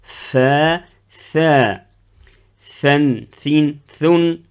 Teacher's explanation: les deux lettres sortent avec beaucoup d'air